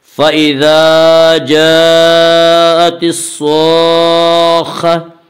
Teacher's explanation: جاء میں مد متصل ہوگا۔ مد متصل وہ مد ہے جس میں حرف مد کے بعد حمزہ اسی لفظ میں آئے، اور مد متصل میں حفص کی روایت میں صرف توسط ہے، اور توسط کی مقدار 2 الف، 2.5 الف اور 4 الف ہے۔